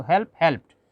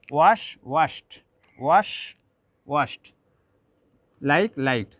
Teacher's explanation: So, when we see root word ends in ta or root word ends in these sounds, these all are unvoiced sounds. In this case, we have to pronounce it ending like ta, and here also t unvoiced sound, because to pronounce these sounds, to make sound, to pronounce this sound, our vocal cord does not vibrate.